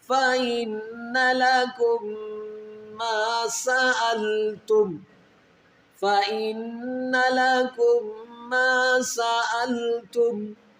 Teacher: فَإِنَّ لَكُمْ، یہاں میم ساکن کا قاعدہ استعمال ہو رہا ہے. میم ساکن کے بعد اگر ایک اور میم آئے گی تو وہاں پر ادغام مع الغنہ کیا جائے گا